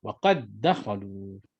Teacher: maka dimasukkan dal pertama ke dalam dal yang kedua dan telah digugurkan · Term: idgham